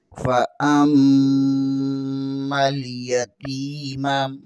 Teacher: या के ऊपर भी ज़बर है, ता ज़ेर के आगे या मद्दा है, इसे एक अलिफ के बराबर खींच कर पढ़ेंगे।